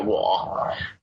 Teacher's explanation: the third tone, it's usually described as a dipping tone, like wa, but normally you wouldn't pronounce it like that because it would sound really, really strange.